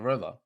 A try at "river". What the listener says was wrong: pronounce river with the R's.